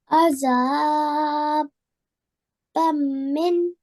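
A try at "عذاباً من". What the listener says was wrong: Well done. A really good job, mashallah.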